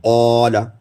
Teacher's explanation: قاف موٹا کریں گے تو الف کو بھی موٹا کریں گے